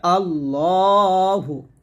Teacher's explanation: আল্লাহু এ হা পেশ এখানে আবার টান দিবেন না